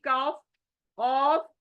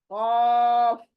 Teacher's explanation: है और हमारी जबान की जड़ है फलक के अंदर तो ये जबान की जड़ उस नरम हिस्से को टच होने से ये लेटर आदा होगा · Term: बड़ी कफ